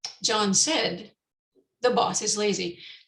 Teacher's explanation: there's a tiny tiny stop between john and said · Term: thought group